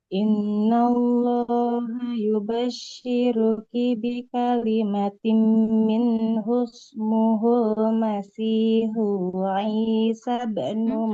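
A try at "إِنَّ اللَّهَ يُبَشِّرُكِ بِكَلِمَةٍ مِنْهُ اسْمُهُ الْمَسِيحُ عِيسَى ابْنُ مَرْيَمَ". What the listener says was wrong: Hanya nggak panjang. Hanya nggak boleh panjang, Ibu. Ismuhul dari situ aja. Ismuhul Masihu Isa bin Maryam. Tidak Isa. Isa bin, sinnya nggak boleh panjang. Nah, nunnya juga sama, nggak boleh panjang. Di sini nunnya dhamma, tidak ketemu waw ya. Ismuhul Masihu Isa bin Maryam.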